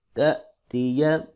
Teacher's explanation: حمزہ ساکن ہے لہذا یہاں پہ جھٹکے کے ساتھ پڑھیں گے